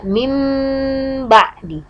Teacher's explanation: mim ba'di ditahan sebanyak 2 harokat juga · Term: iqlab